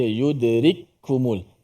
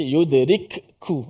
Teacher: Dia punya ada dal, ada ra, kaf mim tu. Baik, huruf kaf yang pertama mati tu dimasukkan ke dalam kaf yang kedua. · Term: diidgham